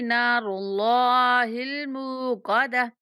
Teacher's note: را اور اللہ کے لام کو موٹا پڑھیں گے اور میم کو تھوڑا سا کھینچ کے پڑھیں گے اور آخر